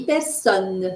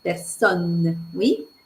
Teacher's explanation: C'est-à-dire que je ne dis pas personne, je dis personne. C'est un O ouvert et il faut prononcer le N.